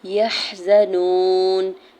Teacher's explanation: واو ساکن سے پہلے نون کے اوپر پیش ہے، واو مدہ ہو رہا ہے، دو کھینچ کے ادا کریں گے